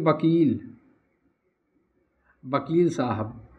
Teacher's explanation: पश्चिमी हिंदी में व का उच्चारण पूर्वी हिंदी में ब हो जाता है।